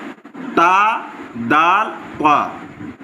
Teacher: जबान की नोक और ऊपर के दांतों की जड़ से अदा होते